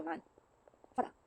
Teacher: the vowel sounds, flat A become broad A